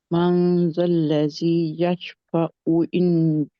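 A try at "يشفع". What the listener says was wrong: यशफाऊ नहीं है, हमजा नहीं है ये, ऊ फिर बनता है या अगर हमजा हो तो। मन ज़ल्लज़ी यशफाऊ इंदहु इल्ला बिइज़्निह। यशफाऊ ऊ।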